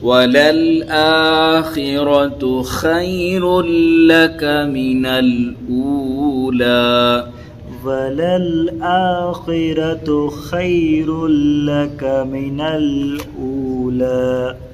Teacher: خے میں یا لین ہونا، خے خے نہیں پڑھنا، خی